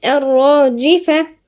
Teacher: الراء راء هنا مشددة ومفخمة